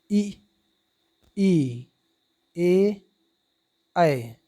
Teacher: जिन स्वरों के उच्चारण में जीभ का अगला भाग ऊपर उठता है उसे अग्रस्वर कहते हैं। जैसे ई, ए, ऐ।